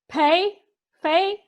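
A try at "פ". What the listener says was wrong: That's the fay, because there's no dogish in there. Without the dogish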